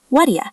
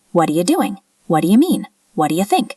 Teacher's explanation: The T in what and the D in do combine into a very soft D sound, like a flap. What'ya. And the U becomes ya.